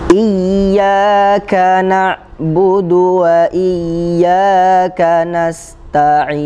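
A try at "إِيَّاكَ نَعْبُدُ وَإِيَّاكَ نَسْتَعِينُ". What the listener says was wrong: Ngucapin ya, dia punya sifat ikhwah ya, jangan terlalu kuat. Iyyaka, iyyaka. Nah ini tidak boleh, tidak benar. Harus tetap ada aliran suara. Iyyaka, mengalir. Iyyaka.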